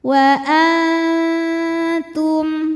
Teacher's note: Nah, karena ta ini makhrajnya masih dekat dengan nun, maka dengungnya masih sedikit. Suara yang masuk hidung masih sedikit, aliran suara dari mulut banyak.